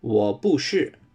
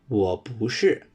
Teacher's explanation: the boo here changes to the rising tone when put with war. So, it's not war boo sure.